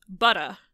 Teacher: a lot of accents in New England drop their R's. So you'd say butta, and you're replacing the R with a vowel. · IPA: [bʌt.ə]